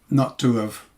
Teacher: grammatical H, disappears in normal speech. So that means that have actually begins with a vowel